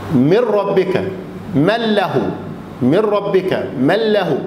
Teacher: الإدغام بغير غنة حروفه الره واللام رلة. الره واللام لو جه حرف منها بعد النون الساكنة أو بعد التنوين ما بعملش هنا غنة حركتين ولا حاجة، بدخل على الحرف على طول. من ربك من له، من ربك من له، ما بقولش غنة هنا.